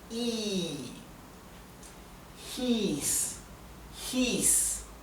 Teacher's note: En alemán la I con la E, que siempre no me canso de repetir lo mismo, la I con la E se pronuncia como una I larga.